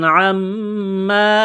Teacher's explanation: میم مشدد پر غنہ کریں گے، آواز ناک میں چھپائیں گے